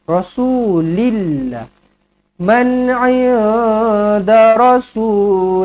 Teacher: perkataan Allah kita baca nipis apabila huruf sebelumnya berbaris berbaris bawah